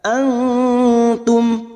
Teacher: nun sukun bertemu ta Ikfa Hakiki kita semarkan bunyi nun sukun dan mendengung selama tiga harakat